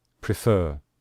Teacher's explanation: we stress the final syllable